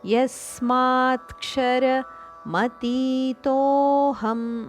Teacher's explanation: ತೋ ದೀರ್ಘ ಅದಕ್ಕೆ ಅವಗ್ರಹ ಇದೆ ಆದ್ದರಿಂದ ಒಂದು ಕ್ಷಣ ಜಾಸ್ತಿ ಉಚ್ಚಾರಣೆ ದೀರ್ಘದ ಉಚ್ಚಾರಣೆ